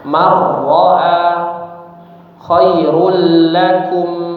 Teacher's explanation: sudah kita bahas bahwasanya kalau ada nun sukun atau tanwin ya bertemu dengan huruf ra dan lam maka dibaca dengan ee idgham tanpa disertai dengung ya langsung dimasukkan ke huruf setelahnya secara sempurna